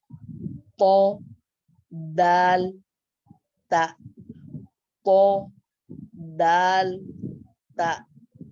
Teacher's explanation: 12واں مخرج نوک زبان اور اوپر کے درمیانی دانتوں کی جڑ سے 3 حرف نکلتے ہیں